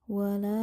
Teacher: terdapat hukum bacaan Mad Jaiz munfasil dibaca panjang 2 sampai 5 harakat